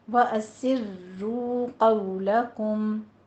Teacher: وَأَسِرُّوا قَوْلَكُمْ، اسروا را تشدید کے ساتھ ہے، آپ نے واو مدہ ادا کرنی ہے، ضمہ ہے، دونوں ہونٹ گول کیجیے۔ وَأَسِرُّوا نہیں کہنا، وَأَسِرُّوا قَوْلَكُمْ، قوف کو پر پڑھنا ہے، حروف مستعلیہ ہے، واولین ادا کیجیے۔